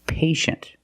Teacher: The first syllable is a long A, like day and pay